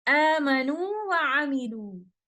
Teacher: So in both cases, we will recite waw mad with 2 counts of maddu tabi'i.